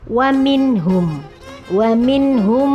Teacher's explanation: Ini adalah izhar halki. Ada nun bertemu dengan ha, dibacanya jelas nunnya.